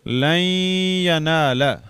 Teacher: لن، نون جو ہے یہ اس میں مدغم ہو گیا یا میں، تو اس کی وجہ سے اس پر شد آئے گی، اور اس کی عربی چھاپے میں یہ جزم جو ہے سکون کی علامت ختم کر دیتے ہیں. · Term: ادغام ناقص